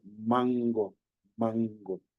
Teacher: al decir esta n de mango es como más nasal tuve un poco hacia la nariz mango en cambio nene [Música]